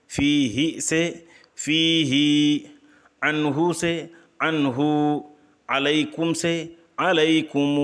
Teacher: صلہ کسرہ کو اتنا کھینچنا کہ یائے مدہ پیدا ہو جائے، اور ضمہ کو اتنا کھینچنا کہ واو مدہ پیدا ہو جائے